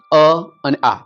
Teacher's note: અ આ ક્યાંથી નીકળે છે અવાજ કંઠમાંથી તો એ બેય કંઠ્ય કંઠ્ય છે કંઠવ્ય પણ કહી શકીએ આપણે